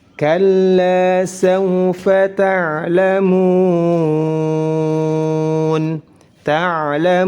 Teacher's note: huruf ain memiliki sifat bainiyah, pertengahan antara sifat rakhawah dan syiddah. Tidak terlalu dialirkan, juga tidak terlalu ditahan suaranya.